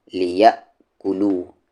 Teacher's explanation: حمزہ ساکن ہے تو جھٹکے کے ساتھ